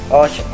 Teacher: they make this sound in the back of their throat, which is like the German ch sound